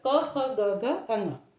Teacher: जब हम क ख ग घ क वर्ग का उच्चारण करते हैं तो ये वायु कंठ से निकलती है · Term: कंठ्य व्यंजन